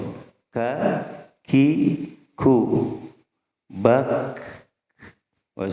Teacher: Jadi di pangkal lidah ke depan sedikit dari mahraj qaf, itu ya. Jadi lebih depan sedikit dari mahraj qaf. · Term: kaf